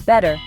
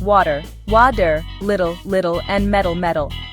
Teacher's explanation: In American English, a T between vowels often turns into a soft D. This is called flapping.